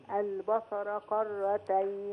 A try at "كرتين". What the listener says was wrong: قرتين لا ك كرتين.